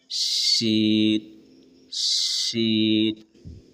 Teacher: तालू में सटाकर जबान के बीच से आवाज निकालते हुए शीन अदा होते हैं। · زبان کے دونوں سائڈ کو تالو میں سٹا کر زبان کے بیچ سے آواز نکالتے ہوئے شین ادا ہوتے ہیں